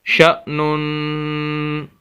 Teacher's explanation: شین زبر حمزہ شا، نون دو پیش نون، یہ نون کے اوپر تنوین ہے، دو زبر دو زیر دو پیش کو تنوین بولا جاتا ہے۔ اس کو غنہ کرنا ہے، ناک میں آواز لے کر جانی ہے، شا نون۔ لیکن اگر ہم یہاں پر آخر میں وقف کرنا چاہیں، سانس کو توڑنا چاہیں، اس صورت میں ہم آخری حرف جو نون ہے اس کو ساکن کر دیں گے۔